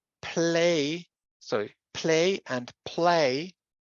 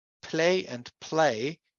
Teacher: the L in the first realization is a light L, so just L, and the one in the second realization is the dark L